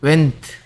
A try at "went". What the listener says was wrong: 자꾸 want래.